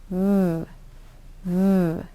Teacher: use your top teeth and touch them to the bottom lip and make it a voiced sound. V, v.